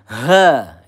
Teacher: hati-hati di sini makhrajnya pangkal tenggorokan